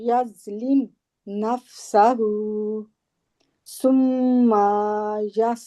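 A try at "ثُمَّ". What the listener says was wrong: तो मीम को लंबा नहीं करना, अलिफ नहीं है इसके आगे, सुम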